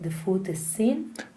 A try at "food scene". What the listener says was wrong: Food scene. Because what you're doing is you're doing the Spanish pause before the S. Like España. Food scene.